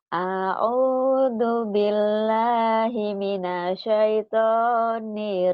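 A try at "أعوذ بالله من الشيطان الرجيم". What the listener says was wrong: nyambar. Nyambar, nyambar. Disambar, sambar. Kurang nyambar.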